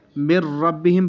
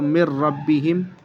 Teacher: یہاں پر میم کو را میں ملائیں گے، نون کو سائلنٹ کر دیں گے بالکل، اور اس میں غنّہ بھی نہیں کریں گے. مر ربہم پڑھیں گے اس کو، مر ربہم.